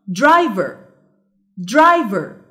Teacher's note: The stressed syllable is drive.